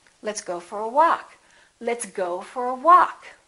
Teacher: go get some stress but walk gets a lot more stress · walk is going to get the stress